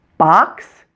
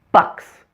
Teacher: Notice how much more my jaw drops for the ah sound for the short O than for the short U.